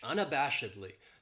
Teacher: This adverb has 5 syllables, and the stress is on that third syllable, that bash, unabashedly. That second syllable has that schwa, that sound, unabashedly.